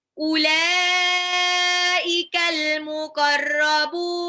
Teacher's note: Tapi disukunkan karena waqaf. Muqarrabun itu jadi mad arid disukun, dibaca 2 sampai 6 harokat.